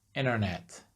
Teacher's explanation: So like in American English, they drop the T completely.